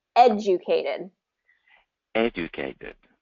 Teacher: other thing that happens here is that invisible Y sound so when there's a consonant and then the letter U um there gets a y sound to it